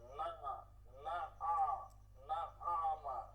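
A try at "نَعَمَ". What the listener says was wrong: হ্যাঁ, টান হয় কেন? টান হয় কেন? না আমা, না আমা, না আমা, না আমা, আমা টান দেওয়া যাবে না, ঠিক আছে? না আমা, না আমা, না আমা।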